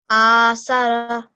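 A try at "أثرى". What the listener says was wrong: Yeah, just the ra should be a bit thicker. So athara.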